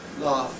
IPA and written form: lɑːf (laugh)